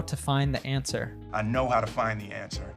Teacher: So the other thing that happens there is he drops the D on find. And this is probably because oftentimes when you have a D and a T following each other, you might drop one of them.